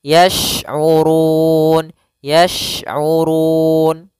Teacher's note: sini ada huruf syin hati-hati jangan terbaca dengan huruf Sin ya syin makhrajnya adalah tengah lidah kita